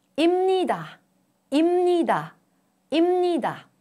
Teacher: Under the influence of 느, 부, a plosive, becomes 무, a nasal sound. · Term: Nasalization